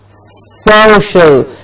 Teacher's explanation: There's only one sh sound in the middle.